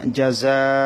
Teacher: এখানে 4 আলিফ টানতে হবে, যেহেতু মদের হরফের পরে গোল হামজা, সেজন্য এটাকে মধ্যে মুত্তাসিল বলা হয়।